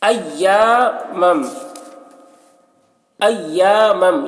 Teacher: ایامم، ایامم، یہاں پر میم ساکن کے بعد میم ہے، میم کو میم سے ملا کر غنہ کے ساتھ پڑھیں گے، اس کو ادغام شفوی کہتے ہیں۔